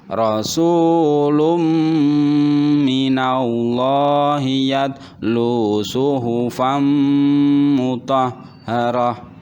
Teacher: dumah tanwin bertemu dengan huruf mim, maka dibaca masuk dan berdengung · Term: idgham bi gunnah